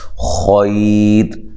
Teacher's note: یہ وقف کی صورت میں را کو باریک پڑھیں گے